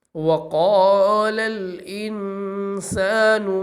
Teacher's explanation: وقال میں جو قاف آ رہا ہے، اس قاف کو ہم پر کر کے پڑھیں گے کیونکہ یہ حروف مستعلیہ میں سے ہے، اور حروف مستعلیہ ہمیشہ ہر حالت میں، یعنی زبر، زیر، پیش، ہر صورت میں ہی حروف مستعلیہ پر پڑھے جاتے ہیں، تو اس وجہ سے اس قاف کو بھی ہم پر کر کے ہی پڑھیں گے۔